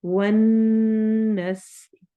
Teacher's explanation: वन नून पे गुन्ना करना है, सीन में सिटी वाली आवाज आएगी।